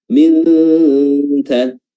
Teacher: Dan disertai dengan sifat apa? Sifat hams atau udara atau nafas yang keluar.